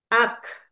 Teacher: pada huruf K ketika kita wakof atau menghentikan bacaan, maka akan terdengar seperti ak, seperti ada H ya, ada hembusan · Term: hams